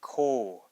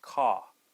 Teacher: We don't have the true O sound. We don't say ko. We have the flat O sound, which is ka.